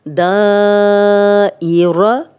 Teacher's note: دا الف مدہ ہے اور آگے حمزہ آ گیا تو اس لیے یہ 4 حرکات ہم نے اس کو لمبا کر دیا ہے